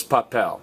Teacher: say pop pal you're not stressing the next to last vowel you're not stressing the a you're stressing the e